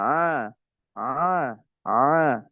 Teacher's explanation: Kemudian di tengah-tengah tenggoraka ada huruf ain dengan ha ya. Nah, ain ini tidak boleh melewati hidung.